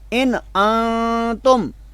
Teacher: اب دو جگہ پر یہاں پہ نون اصلی آپ دیکھ رہے ہیں، ان میں بھی اور انتم میں بھی، تو دونوں جگہ پر مختلف شکل میں جو ہے وہ نون پڑھا گیا ہے۔ اب لفظ ان میں نون ساکن کو ہم نے غنہ کے بغیر پڑھا ہے، اظہار کر کے